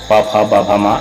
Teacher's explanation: पवर्ग का उच्चारण ओष्ठ से होता है, प फ ब भ म, इसका मतलब है कि हम लोगों को ओष्ठ ओठ जो है एक दूसरे से टच करना पड़ता है दोनों ओठ को